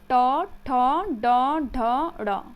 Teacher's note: तो ट बोलने पे क्या होती है, जीभ हमारी मुड़ जाती है। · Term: मूर्धन्य वर्ण